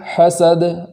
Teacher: دال کو وقف کی حالت میں قلقلہ کے ساتھ پڑھیں گے ، اس طریقے سے پڑھیں گے حسد، حسد، ایسے نہیں پڑھیں